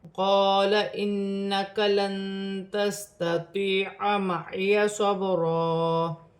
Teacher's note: نون مشدد میں غنہ ہوگا، نون ساکن میں اخفا کیا جائے گا